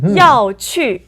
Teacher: So together this is two fourth tones